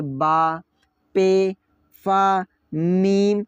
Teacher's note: आप दोनों लिप्स को टकराए बगैर आप बा नहीं बोल सकते हैं, आप पे नहीं बोल सकते हैं ना। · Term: हरूफ शफवी